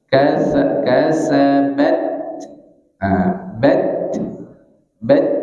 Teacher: Nah, di sini ada huruf ta di ujung. Ta ini sifatnya sama dengan kaf. Ah, tertahan dulu, baru anginnya lewat.